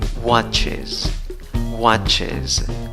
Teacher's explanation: en la conclusión tienes ES, pero en la pronunciación tienes schwa Z. ¿Ok? La primera sílaba es la que lleva la fuerza de voz, contando de izquierda a derecha.